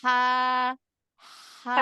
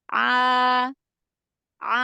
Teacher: Lebih turun ke bawah dibanding dengan huruf ha. Kalau huruf ha, dia lebih naik dari huruf ain.